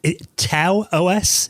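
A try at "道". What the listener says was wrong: TAO is a Chinese word, and it's pronounced Dao. It's supposed to be an unaspirated T, so it sounds like a D.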